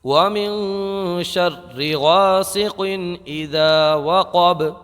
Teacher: اس کے بعد میں قاف ہے، قاف کو موٹا پڑھیں گے، اور با جو ہے نا اس میں قلقلہ ہوگا، اس لیے کہ با کو ہم جب یہاں پر وقف کریں گے تو ساکن ہو جائے گا، اور ساکن کرنے کی صورت میں یہاں پر با میں قلقلہ ہوگا